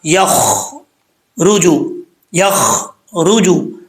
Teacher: را جو ہے اس کے اوپر پیش ہے، پر پڑھا جائے گا، اس کو بری نہیں پڑھنا.